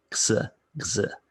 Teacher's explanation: this x sound is really a combination of a G or a K and an S